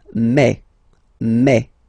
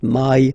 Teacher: when you combine this a and then e vowels you get the sound e e so really open E